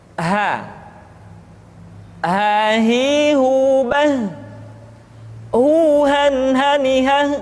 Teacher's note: huruf ha dikeluarkan dari tenggorokan yang terjauh, sama seperti kita mengucapkan huruf a.